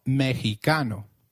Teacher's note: it is pronounced as a throaty H in the words Mexico, Mexicano, and Oaxaca